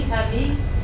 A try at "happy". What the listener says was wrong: Happy. Remember, P, not ba ba ba, ba ba ba. Happy. Happy.